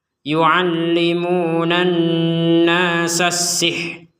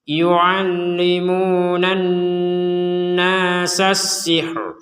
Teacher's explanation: ro-nya ini tetap ada getaran lidah untuk mengucapkan huruf ro walaupun tidak berharokat. Yu'allimunan nasas sihr.